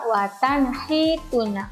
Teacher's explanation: nun mati ketemu ha, watan hituna, maka dibaca dengan jelas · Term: bacaan izhar